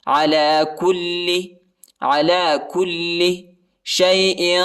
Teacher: काफ को लाम के साथ मिलाना है और लाम को खींचना नहीं है